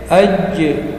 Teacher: qalqala sughra memantul tapi kecil karena di tengah kalimat